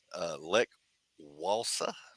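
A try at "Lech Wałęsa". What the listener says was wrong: Like Valenza, Valenza, Valenza. Yeah, it's like a V. Yeah, but they pronounce like a V.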